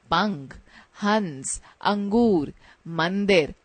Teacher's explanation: इनका उच्चारण करते समय वायु नाक से बाहर निकलती है। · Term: अनुस्वार